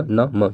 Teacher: मुंह से भी बोले जाते हैं, नाक से भी बोले जाते हैं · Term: अनुनासिक